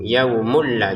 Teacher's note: Yaumulla baru dengan dengan tanpa dengung